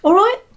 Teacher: so the stress is on the right